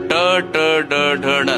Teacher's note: ನಾಲಿಗೆಯನ್ನು ಸ್ವಲ್ಪ ತಿರುಗಿಸಿ ಹೇಳುವಂತಹ ಶಬ್ದಗಳು ಗುಂಪು